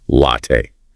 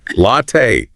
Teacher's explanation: Heavy on the first part, soft on the second. Open your mouth wide for the a sound.